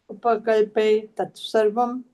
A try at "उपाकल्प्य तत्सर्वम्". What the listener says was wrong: ये उपा है माता जी, जैसे उप भी है ना, तभी भी उपा है, उसका मीनिंग बदल जाएगा। उपाकल्प्य तत्सर्वम्